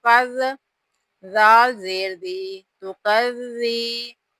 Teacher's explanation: غلطی کر جاتے ہیں کہ زال کو زا پڑھ جاتے ہیں، یہ والا جو زال ہے اس کو نرمی سے ادا کرنا ہوتا ہے، اس کے اندر سیٹی پیدا کرتے ہوئے سختی کے ساتھ اس زال کو نہیں پڑھنا